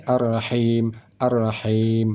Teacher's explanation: Baik, selanjutnya Pada kalimat Ar-Rahim, ha ini sama dengan ha ini, Ar-Rahim, Ar-Rahim, sama ha ini di tengah kerongkongan, ha ini juga di tengah kerongkongan. Ha ini saat kita baca ada keluar angin halus, ha ini juga ada keluar angin halus.